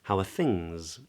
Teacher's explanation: I think the word things would be the stressed word in this little question